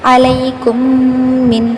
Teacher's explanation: چاروں مثالوں میں غور کیجیے، ہم ادغام کر رہے ہیں یعنی پہلی میم کو دوسری میم میں ملا رہے ہیں، ساتھ غنہ بھی کر رہے ہیں یعنی آواز کو ناک میں چھپا کر پڑھ رہے ہیں